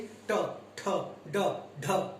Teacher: ट में आपकी जिह्वा जो है इस भाग को स्पर्श करती है, मूर्धन्य भाग को स्पर्श करती है। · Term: मूर्धन्य ध्वनियां